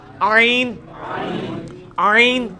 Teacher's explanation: ہا کا مخرج جو ہے نا یعنی وسط حلق, ادھر ہی سے یہ آئین بھی نکلنا ہے